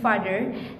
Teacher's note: in English, a vowel A, as in father, the mouth is relatively open